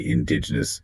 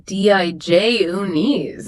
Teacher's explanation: People want to say indigenous, putting the stress on the first part. The stress actually falls on the second syllable.